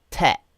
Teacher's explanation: in Yorkshire, they might, instead of the, they might say te, like that.